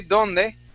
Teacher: the difference between the Spanish D and the English D is that in Spanish, you touch your tongue to your teeth